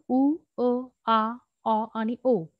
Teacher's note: स्वराचा उच्चार होताना हवा पूर्णपणे मुखविरातून बाहेर पडते